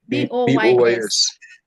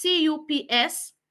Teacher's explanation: Now, when you're grouping them, you realize that boys will not go on the same side with caps, because even though the last letter is S, it is not going to be pronounced as S, but as Z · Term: S becomes Z